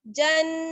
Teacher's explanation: जीम को नून से मिलाएंगे, गुन्ना होगा